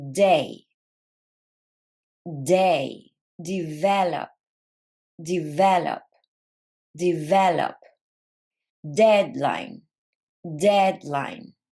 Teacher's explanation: D is a voiced sound, which means your vocal cords are going to vibrate when you are producing it. Number 2, it's alveolar. · it's plosive. This means that there is a small burst of air, especially in stressed syllables.